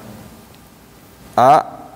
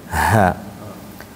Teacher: pangkal tenggorokan yang paling bawah hurufnya ada dua, yaitu Hamzah dengan ha